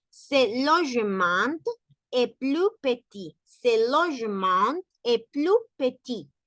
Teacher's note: No se va a pronunciar la S final de plus.